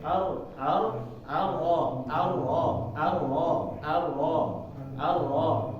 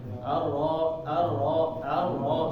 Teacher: dia getarannya sedikit menjadi huruf bainiah enggak berhenti enggak juga mengalir begitu mengalir jadi ada stopnya sedikit ar ar ar seperti tadi